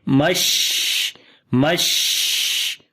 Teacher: So we say now all together hammazim masha'im bina meme. And here in the sheen we make hums quality, we continue our breath, and also we make tafashi quality, which means spread the sound of sheen into your mouth.